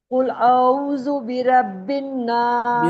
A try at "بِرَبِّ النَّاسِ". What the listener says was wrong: برب نہیں، برب الناس. برب. رو موٹی پڑھیں.